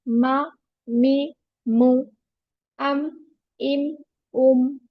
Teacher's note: मीम में दोनों lips को मिलाना है, आउटर पोर्शन को, ड्राई पार्ट को।